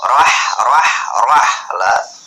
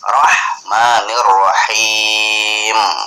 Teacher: Rohnya tebal, ahnya tipis. Jadi roh membacanya lah.